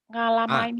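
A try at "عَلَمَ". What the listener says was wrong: Bukan ngalama, alama, ngalama. Ngalamin apa Mbak? Alama.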